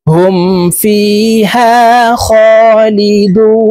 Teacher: এই দুকে তিন আলিফ টেনে নুনকে সাকিন করে ফেলবো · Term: মধ্যে আরজি